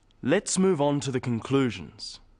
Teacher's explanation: stressing conclusions because it's the key word in this sentence